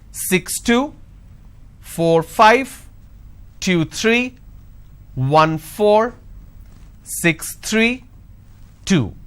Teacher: for every two digit the second digit my tone is going up